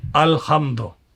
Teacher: जो झटके के साथ पढ़ा जाए, वो क्या होता है? हमजा।